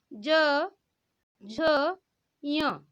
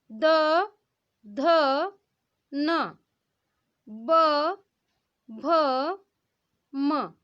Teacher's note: आपके गले से जो है वो कंपन हो रहा है, आपकी स्वर तंत्रियों में क्या हो रहा है, कंपन हो रहा है, और इसीलिए इसे हम क्या कहेंगे, सघोष व्यंजन कहेंगे।